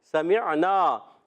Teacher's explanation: یہاں نون مشدد ہے، ایک الف کا غنہ بھی کرنا ہے، الف مدہ کھینچنا بھی ہے. سمعنا، عین کو ساکن کریں گے، عین کی ادائیگی حلق کے درمیان والے حصے سے